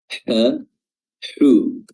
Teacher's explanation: ha dikeluar dari wasatul halq, ya, tenggorokan bagian tengah